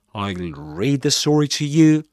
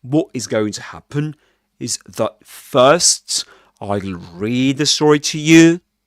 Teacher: we call it a rising tone because we can see that his voice actually does that